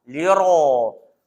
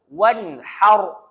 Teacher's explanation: ro tu baris atas kena tebal